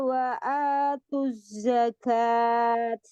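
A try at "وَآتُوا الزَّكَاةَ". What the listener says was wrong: Bukan zakat. marbutoh ketika sukun jadi ha. Ya, wa atuz zakah.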